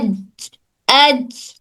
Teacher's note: एज, तो जब एज बोल रहे तो जबान कहाँ टच हो रही? जबान का दरमियानी हिस्सा ऊपर तालू के दरमियानी हिस्से से टच हो रहा। एज, एज आ रहा, एज। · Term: जीम